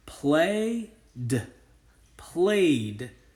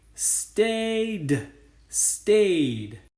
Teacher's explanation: Notice that the base word is play. Since Y was one of our voiced sounds, I know that typically the ed in this word is going to say d. If I put this hat on the ed, essentially I'm reading the word this way.